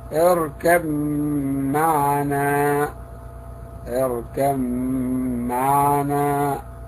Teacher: إذا جاءت الباء ساكنة وجاء بعدها حرف الميم فهنا حكمها الإدغام